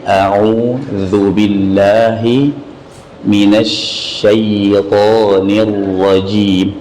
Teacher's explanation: Hamzah dibaca dari tenggorokan paling bawah, kemudian au dibaca dari tenggorokan tengah.